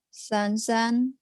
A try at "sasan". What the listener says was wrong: Sasan, jangan Sansan. Sansan lain lagi.